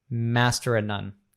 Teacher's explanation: So in that second of, even we remove the v sound altogether, master of none.